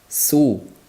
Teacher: Su bo'lib oxirida ko'rsatib beraman labdagi harakatini. Sni o'z maxrajida aytib olgandan so'ng zammaga chiqishi kerak labimiz.